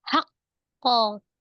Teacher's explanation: Ada jeda, pantulannya mengikuti hurufnya, tebal. Jadi pantulannya juga tebal. Tapi tidak ada hamzah sukun, bukan ko, tapi ko.